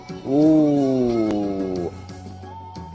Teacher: the full stretch with the smallest lip opening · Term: number one